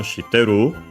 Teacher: So when spoken would have the intonation shiteru, the rising intonation at the end.